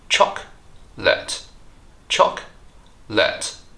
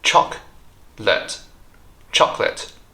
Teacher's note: Notice how the second O is silent here. We drop that syllable, so it's chocolate.